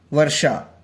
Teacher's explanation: देखिए वर्षा में ये रहा मूर्धन्य श, वर्षा।